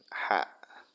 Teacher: Jadi tempat keluarnya huruf ha itu adalah tengah tenggorokan. Ha tengah tenggorokan.